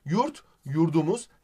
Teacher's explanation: diye yumuşamış kitap kitabı olmuş p sertken b olmuş yurt yurdumuz t sertken d olmuş diyoruz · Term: ünsüz yumuşaması